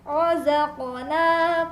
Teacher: ketika huruf qaf sukun dibaca, maka akan terdengar bunyi pantulan dari makhrajnya. Akan terdengar bunyi pantulan yang cukup keras ya.